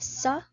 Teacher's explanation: So our onset is the phoneme S. Our nucleus is our inverted V.